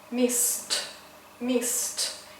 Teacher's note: For example, in the verb missed. So s is voiceless, that's why we need to pronounce t as a voiceless consonant. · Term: t sound